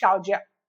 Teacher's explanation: Okay, அப்ப இதுலயும் வந்து நம்ம இந்த ஃபர்ஸ்ட் தேர்ட் டோனை வந்து we are bringing it to the second tone.